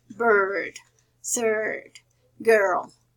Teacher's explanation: For example, bird. It's a combination of schwa and eh. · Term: open mid central